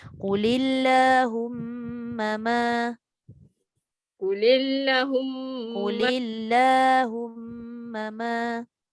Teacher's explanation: Ma yang pertama pendek, ma yang kedua panjang. Qulillahumma ma.